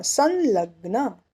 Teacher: स पे अनुस्वार, आगे आया ल, तो उसका अनुनासिक ल